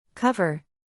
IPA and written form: ˈkʌv.ər (Cover)